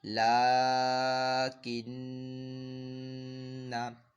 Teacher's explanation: اور یہاں پہ دیکھیں یہ نون مشدد ہے، اور نون مشدد ہوتا ہے تو غنہ ہوتا ہے، تو یہاں پہ بھی جو ہے غنہ کیا جائے گا، یعنی نون مشدد کی نون کی جو آواز ہلکی سی ناک میں لے کے جائیں گے، اور ایک الف 2 حرکات کے برابر اس کو کھینچ کر پڑھیں گے